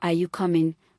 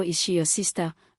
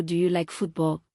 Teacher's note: Two, rising intonation, up right arrow, the pitch of the voice goes up at the end of the sentence. Rising intonation is used for yes / and no questions.